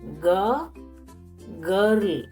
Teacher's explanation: is coming from back of the mouth and there is no aspiration no ha sound to pronounce correctly pronounce it as you pronounce ga in english